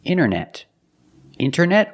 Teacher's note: wanted or wanted it's more common to hear Americans say wanted you have NT in the middle the t is silent